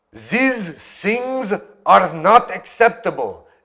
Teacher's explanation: você produz o som de S ou Z no lugar do TH. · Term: TH alveolarization